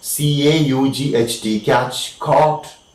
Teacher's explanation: Next sound which is produced with the back of the tongue is the long O sound, like in CAUGHT, catch, caught, long sound O.